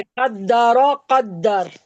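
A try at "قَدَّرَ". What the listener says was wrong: ठीक है, सही है।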